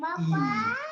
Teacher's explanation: So we have two syllables in eager, eager, two syllables. The stress is on the first syllable, eager.